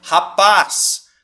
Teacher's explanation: Rapaz, qual que é a sílaba tônica? É o paz, a última sílaba